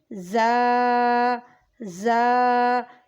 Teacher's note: زا کو سیٹی اور سختی کے ساتھ پڑھتے ہیں